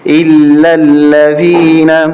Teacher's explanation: یہ دونوں الف نہیں پڑھنے، لام کو لام کے ساتھ ملانا ہے